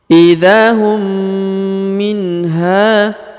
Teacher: Huruf mim bertemu dengan huruf mim, maka ditahan dan ditekan, didengungkan 2 harokat ya